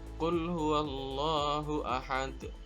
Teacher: di ujung kalimat hope of Jim badan kok ada di akhir maka baca pantulannya lebih besar daripada Qolqolah Sugro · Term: qolqolah kubro